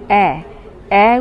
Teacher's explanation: অয়জাফলা আকার অ্যা উচ্চারণে ঠোঁট ছড়িয়ে যায় বা প্রসারিত হয়, জিভের সামনের দিক নিম্ন মধ্য উচ্চতায় ওঠে, মুখের ভেতর পুরো নয় অর্ধ বিবৃত হয়। এর উচ্চারণ বৈশিষ্ট্য প্রসারিত, সম্মুখ, নিম্ন মধ্য, অর্ধ বিবৃত।